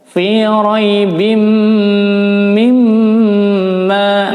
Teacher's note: tanwin bertemu mim, idgham bi gunnah, ditahan, dilebur dan didengung, ditahan 4 ketukan. Fi raibim mimma, mim tasydid.